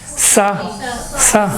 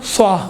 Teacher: فرق یہ ہے سین میں سیٹی کی آواز باریک ہے، صاد میں موٹا ہے